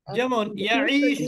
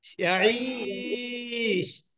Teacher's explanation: আপনি যখন ইয়াঈশু পড়বেন তখন কিন্তু এক আলিফ মাদ হবে, আর যখন ইয়াঈশ বলবেন তখন কিন্তু তিন আলিফ মাদ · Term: মাদ্দে আরজি